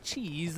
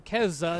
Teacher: But because of umlauting, which is a linguistic phenomenon, the A became an A. It got fronted, which in English changed the K to a Ch, but did not in German. So it became Käse in German and cheese in English.